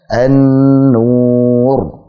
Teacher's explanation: Gunnahnya mutawwalah. Gunnahnya dipanjangkan karena dianggap sebagai nun tasydid.